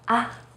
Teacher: any marks on top to make the neutral tone try to say it as in the first tone except that you say it in a more light and short way